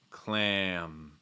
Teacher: So again, when you get this A sound plus an M, it's like you're going to feel your tongue sliding back, and then you're going to add a slight breath out of your nose before the M.